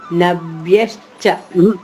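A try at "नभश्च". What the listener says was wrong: వ్యా కాదమ్మా,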